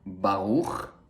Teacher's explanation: So the first word has a uvular R, a pure uvular R.